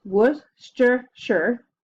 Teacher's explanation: the second part of Worcestershire is sure it's not pronounced Shire it's sure when you put it all together it's actually only 3 syllables